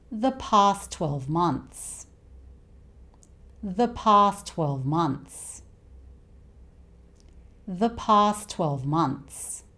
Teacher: we tend to drop the first 't' sound, and we just keep the second 't'.